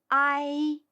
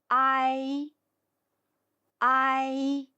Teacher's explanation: 先发第一个字母啊的音，然后很快滑向第二个字母一的音，要注意连贯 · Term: 复韵母